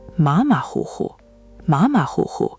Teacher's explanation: First tone, third tone, third tone, third tone. Try to link them together.